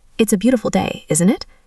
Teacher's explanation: My voice went down because I'm confident about what I'm saying.